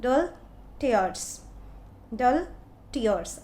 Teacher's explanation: unstressed और फिर stressed है